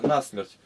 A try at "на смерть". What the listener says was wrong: Почему не на смерть, а на смерть? Ты как старообрядец, на предлог делаешь ударение. На смерть, конечно.